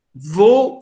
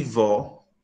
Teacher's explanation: Vou e vó, isto é, vou, a vogal é fechada, ou é fechado, em O, ela é aberta, esta diferença de timbre, esta descontinuidade, altera o sentido das palavras. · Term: timbre fechado, aberto